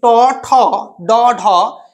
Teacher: জিহা উল্টে গিয়ে মূর্ধা স্পর্শ করে, এই জন্য এগুলোকে বলা হয় মূর্ধন্য, মূর্ধন্য বর্ণ।